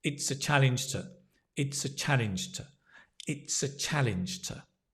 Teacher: notice the to becomes t